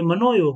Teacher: मनः और योग मिलकर के मनोयोग हो गए, इसमें विसर्ग का ओ हो गया